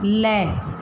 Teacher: जीभ की नोक हमारी ऊपर टच होगी और इसकी जो ध्वनि है वो दोनों साइड से दोनों बगल से बाहर निकलेगी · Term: पार्श्विक व्यंजन